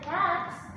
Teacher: When the cats, the T is voiceless. So the suffix S is still voiceless.